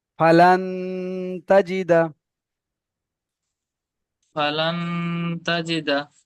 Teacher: নুন সাকিনের পরে হরফে ইকফার 15টি অক্ষরের মধ্যে তা এসেছে, তাই নুন সাকিনের আওয়াজকে নাকে তুলে এক আলিফ পরিমাণ গুণনা করে পড়তে হবে